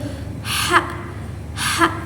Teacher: huruf H itu keluar dari tengah tenggorokan juga. Nah, tetapi dia itu dia itu ada hembusan udara yang lebih kuat dari huruf ain. · dia itu ada hembusan udara yang lebih kuat dari huruf ain. Terus dia juga bersifat mahmus.